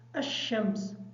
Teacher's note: جب حمزہ کو شین کے ساتھ ملائیں گے تو تھوڑا سا سختی کے ساتھ ادا کریں گے تاکہ شین کی شد جو ہے وہ صحیح طریقے سے ادا ہو جائے۔